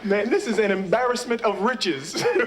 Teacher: his tone is very light and almost high pitched